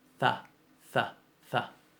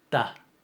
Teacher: El puntito les cambia la pronunciación, de fricativa a oclusiva.